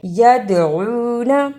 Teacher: دال جزم کی صورت میں حرف قلقلہ ہے، یعنی اس حرف کو ہلا کر پڑھنا ہے